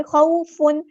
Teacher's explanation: واو لین ہو رہی ہے، مد لین ہو رہی ہے، نرمی سے موڑیں گے